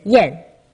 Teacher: your tongue goes up just a tad in Mandarin in the direction of e